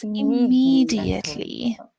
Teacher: that second syllable is highlighted